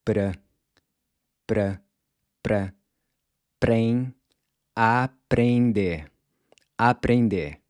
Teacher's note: the “r” here is gonna sound more like a soft “d”. where your tongue just barely taps the ridge right above your front teeth.